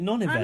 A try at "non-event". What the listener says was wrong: You said that funny. You said non-event funny. Non-event. Like it's all one word.